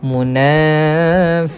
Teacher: kita jumpa dengan mad asli baca panjang dua harakat